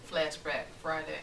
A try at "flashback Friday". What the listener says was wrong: I feel like you said maybe the R in that flashback.